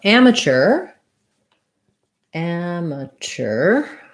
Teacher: amateur first syllable stress and mature second syllable stress